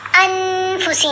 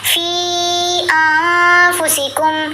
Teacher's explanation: نون کو چھپا لینا ناک میں